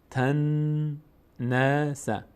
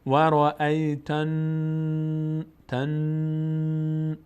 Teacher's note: این نگه داشتن صدا در هنگام تلفظ نون مشدد و از بینی ادا کردن رو بهش میگیم غنه. فقط برای نون تشدید دار و میم تشدید دار این قاعده اجرا میشه.